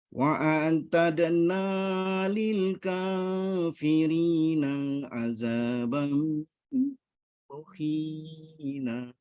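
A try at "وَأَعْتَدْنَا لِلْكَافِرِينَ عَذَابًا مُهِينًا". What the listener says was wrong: Diulang, lil kafirina, nanya pendek. Diulang.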